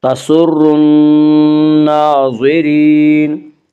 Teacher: الف لام اگر حروف شمسی کی شروع میں ہوں تو الف اور لام کو نہ پڑھا جائے گا بلکہ بعد والے حرف سے ملا کر پڑھیں گے · نون مشدد غنہ ہوگا، غنہ کی مقدار ایک الف ہے، اور نون کے اوپر کھڑا زبر ہے، کھڑا زبر قائم مقام ہے الف کے، اس لیے کھڑا زبر کو ایک الف کے برابر کھینچ کر پڑھیں گے۔